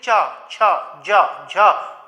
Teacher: कहाँ उच्चारण हो रहा है आपका, तालु से जीभ स्पर्श हो रही है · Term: तालव्य